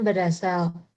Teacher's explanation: Sedangkan pada contoh yang kedua, prefiks ber bertemu dengan morfem dasar berfonem awal a, sehingga fonem akhir pada prefiks ber, yaitu fonem r, mengalami pergeseran ke silabel berikutnya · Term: pergeseran fonem